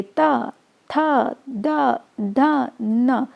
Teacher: इन सबको बोलने पे आपकी जो टंग है वो आपके तीत को टच कर रही है, तो उसका जो उच्चारण स्थल होता है वो होता है दंत।